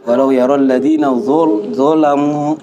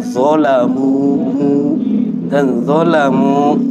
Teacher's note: Walau yaral ladina zalamu dimonyongkan sempurna. Zalamu kan, zalamu jangan sampai bercampur ke hidung. Makanya monyongnya disempurnakan.